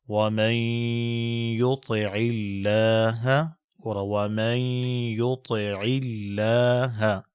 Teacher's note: اوس د نون ساکن په دیا کې مدغم شوی دی